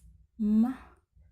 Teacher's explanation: The place of articulation is bilabial. The manner of articulation is nasal.